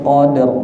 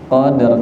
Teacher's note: Jadi awalnya qad terus ditambah rok sukun qadar. Qadar nggih.